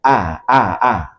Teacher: Hamzah keluar dari pangkal tenggorokan.